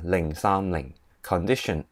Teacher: it starts with the low tone, goes up and go down again